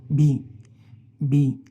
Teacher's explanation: ये बाइलेबल है। बाइलेबल्स 2 होंठों को मिलाकर जो है ना ये प्रोनाउंस किया जाता है। ये नॉन एस्पिरेटेड है, ठीक है? इसमें जो है ना हवा जो है ना वो नहीं निकलेगी, बिल्कुल नहीं निकलेगी।